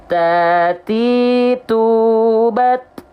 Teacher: bukan mengalir nafas tapi hanya berupa percikan nafas maka dilafalkan cuman dipercikan saja selesai jangan sampai Nah itu berlebihan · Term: sifat hams